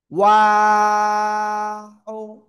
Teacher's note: দুই ঠোট গোল করে ও তিন আলিফ টান